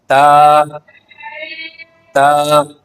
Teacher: حرف تا باریک حروف میں شامل ہے، اس لیے اسے ہمیشہ باریک ادا کیا جاتا ہے۔ یہ ہمس والے حروف میں سے ہے، یعنی اس کی ادائیگی کے وقت سانس کی ہلکی روانی محسوس ہوتی ہے۔ اس کا مخرج زبان کی نوک اور اوپر کے اگلے دو دانتوں کی جڑ ہے۔ تا تا اس کا مخرج کیا ہے؟